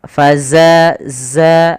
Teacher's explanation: Harusnya ada aliran suaranya faza za dan dia sifatnya jahar. Jahar itu tertahannya nafas tapi mengalirnya suara.